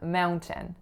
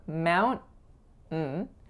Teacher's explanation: in the American Way there's an N followed by a glottal stop